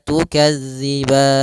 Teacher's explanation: tukazziban empat harakat saja baru dimatikan nunnya dengan sempurna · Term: Mad Arit sukun